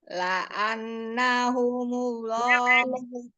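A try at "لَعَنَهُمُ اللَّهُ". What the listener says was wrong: Nunnya jangan segitunya. La'anahumullah.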